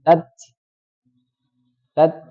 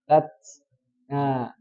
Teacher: Nah, keluarnya suara nafasnya itu ketika dia melepas lidahnya. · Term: hams